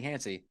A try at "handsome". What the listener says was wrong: Handsome. You said handsy.